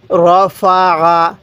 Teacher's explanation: আইনটা গলার মধ্যে চাপ দিলে আইনটা সহি উচ্চারণ হবে। তাহলে র ফা আ।